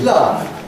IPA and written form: lʌv (love)